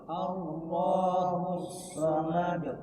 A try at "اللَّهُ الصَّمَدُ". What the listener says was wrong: Allahus somad. Iya, jangan sampai dipanjangkan.